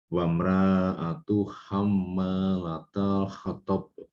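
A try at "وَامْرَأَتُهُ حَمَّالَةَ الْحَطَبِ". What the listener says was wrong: Ulang sedikit, afwan. Wamra'atu. Ro-nya dibaca.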